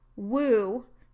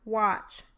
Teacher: there is little movement of the articulators between the consonant and the vowel in the word woo, but a much greater degree of movement of the articulators between the consonant and the vowel in the word watch